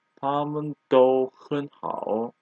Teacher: Here, 很 becomes second tone.